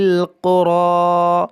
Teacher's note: دیکھیں را کو موٹا کریں گے، قاف کو موٹا کریں گے